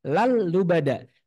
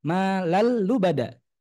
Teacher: Lal lubada ini idgham kamil, idgham atau huruf lam yang fathah tanwin masuk secara sempurna ke huruf lam selanjutnya.